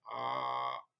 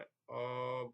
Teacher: तो इनके वर्ण में कंठ आकार के उच्चारण में कंठ संकुचित होता है। जैसे आ के उच्चारण में जो है हमारा कंठ खुलता है आ ऐसे बोलते हैं, ऐसी तरह अ बोलेंगे तो कंठ संकुचित होता है। और इसमें जिह्वा जो आकार के उच्चारण में वो स्वर सीमा तक उठी हुई होती है।